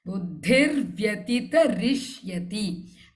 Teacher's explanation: this dha is mahaprana in buddhi